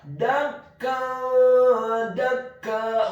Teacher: hukum bacaannya adalah ikhfa, dibaca secara samar-samar. Kemudian kata dakka, huruf dalnya dibaca tipis, fathah 1 harokat, dan di akhir ayat huruf kafnya dibaca tipis, ditasydidkan, ditekankan, fathah 2 harokat karena setelahnya ada alif.